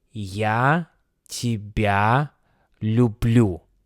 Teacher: The stress falls heavily on the last syllables.